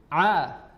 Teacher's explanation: huruf ain makhrajnya adalah dari tengah tenggorokan